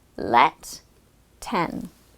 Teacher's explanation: notice how the consonants close the syllable making the vowel sound short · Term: short vowel e